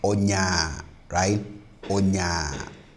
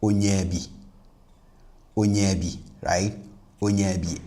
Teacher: Even if the last vowel of the first word is minus ATR, the plus ATR sound of the second word will cause that last vowel, which is minus ATR, of the first word to change into a plus ATR version to ensure that the whole construction is, harmonious.